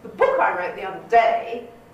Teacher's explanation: i get over the articles and what have you very quickly lexical items though like book another day i'm going to dwell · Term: weak forms